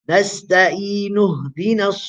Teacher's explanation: So the mad now is a mad asri. It's only 2 vowels, right?